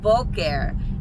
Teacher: we put the stress on the second to last syllable which in this case is the first syllable